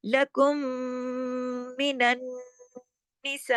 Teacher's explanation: مد کے بعد ہم نے حمزہ زیر ای ایک حرکت پڑھا